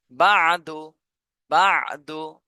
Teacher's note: আইনে যখন যখন জজম থাকে তখন আইনের উচ্চারণটা শুনলে মনে হবে যে গলার মধ্যে আটকায় গিয়েছে এভাবে উচ্চারণটা হবে বা দাল পেশ দু বাদু বাদু বা আইন